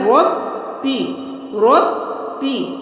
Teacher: अब दोबारा तशदीद आ गई तो बा को पहले रॉ के साथ मिलाएंगे, फिर अपनी हरकत के साथ।